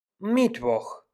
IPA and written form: ˈmɪtvɔx (Mittwoch)